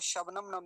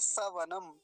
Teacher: तालव्य सकार के स्थान पर दंती सकार है